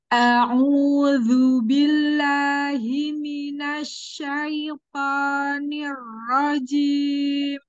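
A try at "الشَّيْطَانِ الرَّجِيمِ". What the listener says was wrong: baik, shinnya lebih baik, tapi huruf to-nya. Huruf to-nya Ana masih melihat gini, syaito. Ini, huruf to bukan huruf bibir. To. Baik, nanti perbaiki cara mengucapkan huruf to. Enggak boleh gini. To, oh, to, rahang aja yang dibuang gini. To, oh, oh, coba ibu latih dulu dari oh. Ah, jangan oh. Bibirnya biasa aja. Oh. Enggak, bibirnya biasa aja.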